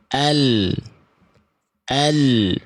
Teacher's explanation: Yang ini ujung akhir lidah, yang ini ujung tepi lidah. Nah, huruf lam itu dilafalkan dari ujung tepi lidah menyusur sampai ke ujung akhir lidah. Dari kedua ujung tepi lidah, baik yang kanan ataupun yang kiri, kedua ujung tepi lidah ini menyusur sampai ke ujung lidah.